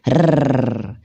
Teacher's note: Takrir itu adalah getaran, teman-teman. · Bergetarnya ujung lidah ketika mengucapkan huruf ro.